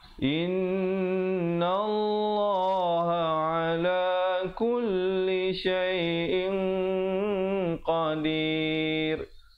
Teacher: Dan in itu ikhfa, jangan lupa, kerana qafnya sifat isti'la dibacakan dengan tebal